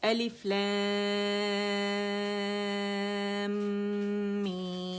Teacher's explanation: پھر میں نے میم کی آواز کو 6 کاؤنٹ کھینچا، میم ساکن آیا تو اس کی آواز کو 1 کاؤنٹ کے لیے چڑھایا. غنہ مجھے ناک میں فیل ہوا میم کا